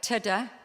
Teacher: the only difference between ta and da is that we don't voice ta, but we voice da